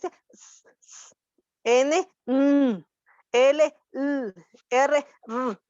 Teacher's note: Alveolares, punta de la lengua con la encía o el alveolo.